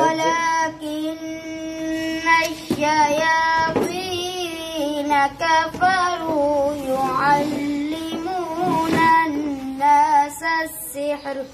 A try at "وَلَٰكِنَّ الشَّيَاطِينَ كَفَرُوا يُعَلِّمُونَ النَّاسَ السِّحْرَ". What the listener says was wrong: آپ نے سانس بچانے کے لیے نا گننا چھوڑ دیا. یعلمون. ٹھیک ہے. یعلمون سے پڑھ لو.